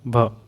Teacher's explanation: हिंदी की स्पर्शीय, घोष, महाप्राण, ओष्ठ्य व्यंजन ध्वनि है